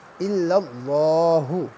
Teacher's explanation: اللہ کے لام سے پہلے زبر ہے، لہٰذا اللہ کا لام جو ہے یہ پور ہوگا